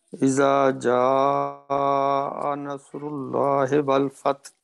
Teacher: یہ اذا زال کے بعد یہ الف ہے، دو حرکت تک کھینچیں گے